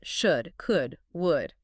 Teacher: the silent L in should or could or would. You just don't pronounce it.